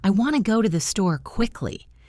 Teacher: The important words want, go, store are stressed and take longer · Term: stresstimed language